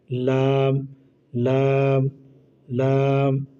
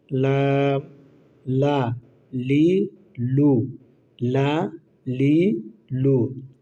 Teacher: লাম হচ্ছে জিহ্বার আগার কিনারা সামনের উপরে দাঁতের গোড়ার সঙ্গে লাগাইয়া, জিহ্বার আগার কিনারা সামনের উপরে দাঁতের গোড়ার সঙ্গে লাগাইয়া।